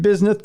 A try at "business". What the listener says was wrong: It sounds like you have a speech impediment, like a lisp when you say his name. Like it's supposed to say business.